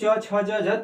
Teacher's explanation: तालु की सहायता से बोला जाता है। मुख का जो ऊपरी भाग होता है तालु।